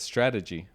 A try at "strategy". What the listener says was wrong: You You switch the G and the D.